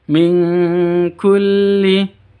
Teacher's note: Nun sukun bertemu dengan kaf, samar disertai dengan dengung.